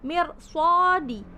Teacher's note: Di situ mirsadi dibaca tafkhim karena ro sukun itu bertemu dengan huruf shad.